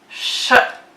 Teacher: the SH is a breath sound because we use our breath when we say it out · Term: SH sound